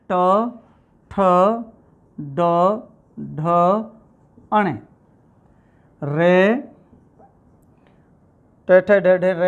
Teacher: आते हैं मूर्धन्य के ऊपर। जिह्वा अब हमारी मूर्धा की ओर जा रही है, अर्थात हमारे सिर की ओर जा रही है, और जब सिर की ओर जाती है तो उन व्यंजनों को हम कहते हैं मूर्धन्य व्यंजन